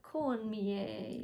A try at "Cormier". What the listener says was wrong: Cormier. There's no N. There's no N. Cormier.